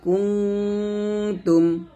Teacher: নুন সাকিনের পর তা গুন্না করবেন